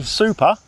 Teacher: you won't feel the puff of air on the P in super because it's not aspirated.